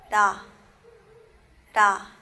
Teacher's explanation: riul no suena como una R ni como una L, sino que un término medio